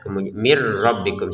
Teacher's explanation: Di sini min kan. Tapi karena di depannya ada ro maka kita masukin nun sukun ini kepada ro sehingga terbacanya langsung mirrabbikum. Jadi yang pertama bacanya min, kemudian karena di depan ada ro kita bacanya mir ya mirbikum seperti itu.